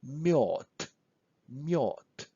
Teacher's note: When we say mjod, we practically say T at the end.